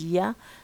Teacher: We have only one ya sound, which is one palatal sound